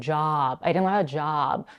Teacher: Do you guys hear how she is elongating the word job? Do you hear how quickly she says, I didn't have a, and then job.